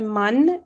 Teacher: if you just bring your tongue backwards a little it's just got to sound slightly nasalized